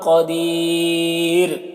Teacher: را کو باریک پڑھیں گے